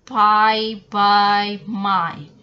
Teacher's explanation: Bilabial here made with the 2 lips, pi, by, my.